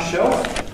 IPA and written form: ʃeof (shelf)